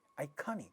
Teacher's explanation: ka sound in this stressed syllable is getting aspirated in the word iconic